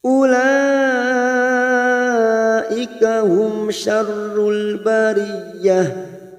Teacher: Ada mad yang bertemu dengan hamzah dalam satu kalimat, mad wajib mutasil 5 harokat